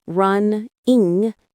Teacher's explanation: The G in running is an NG sound, not a hard G.